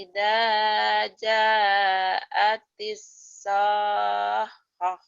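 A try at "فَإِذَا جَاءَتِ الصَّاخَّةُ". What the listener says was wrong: Fa'idha ja'atis sokhah. Nanti kho-nya dilatih.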